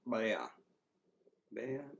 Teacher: the A just kind of sounds lower there, where it's like Bea becomes Ba.